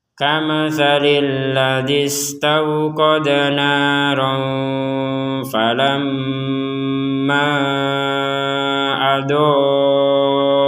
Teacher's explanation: ketika kita ingin menggabungkan falamma dengan adoat, maka panjangnya falamma menjadi 6 harokat